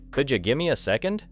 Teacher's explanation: Could you becomes could ya. Give me becomes gimme. The important meaning is still there, but the sentence has been compressed.